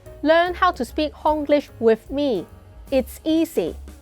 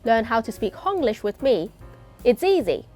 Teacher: Avoid the Z sound. Instead, replace it with an S sound.